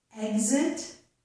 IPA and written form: ɛg zɪt (exit)